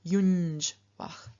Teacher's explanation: the N changes into the palatal nasal nya